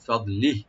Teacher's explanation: ওয়াকফ করলে ফদলিহ এখানে হাটা সাকিন হয়ে যাবে